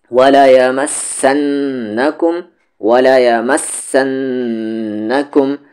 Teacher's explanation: بس نون پر یہاں غنہ کرنا، یعنی آواز کو یہاں پر ناک میں رکھنی ہے